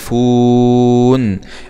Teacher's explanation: إذا وصلنا الآية بالآية التالية نقف على يستوفون بالمد العارض للسكون